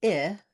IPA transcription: ɪ